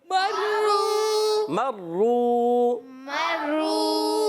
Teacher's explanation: را پر تشدید ہے، را کو زر رک کر ادا کریں گے، مگر آگے واو مدہ بن رہا ہے، واو ساکن ہے، واو ساکن سے پہلے پیش آ رہا ہے. ایک الف کھینچنا بھی ہے اور را کو پر بھی پڑھنا ہے.